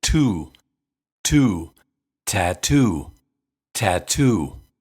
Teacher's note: that's why tattoo has two aspirated T's